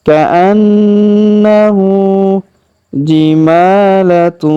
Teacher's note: huruf ma kita panjangkan 2 harokat karena alif kecil di atasnya. Jimalatu, kemudian tanwin un, huruf tun ya, bertemu dengan huruf su maka kita dengungkan dan kita samarkan cara bacanya.